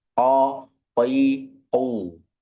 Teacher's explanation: Yang pertama dalamnya huruf qo yaitu dipangkal lidah-lidah paling belakang bertemu dengan langit-langit bagian paling belakang pula yang masih empuk itu